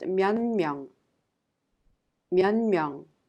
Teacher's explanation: Therefore, it affects the previous sound. The 디귿 in 몇 is affected by the nasal sound 미음, and it becomes 니은 and is pronounced 면명.